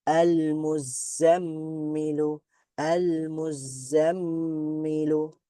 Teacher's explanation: সাদ্দা হওয়া বা দুইটা সাদ্দা হওয়া যেমন আল মুজাম্মিলু আল মুজাম্মিলু মিমের মধ্যে একটু দেরি করলাম কেন কারণ এখানে মিম সাদ্দা আছে · মিমের মধ্যে একটু দেরি করলাম কেন? কারণ এখানে মিম সাদ্দা আছে, তার মানে গুণনা হবে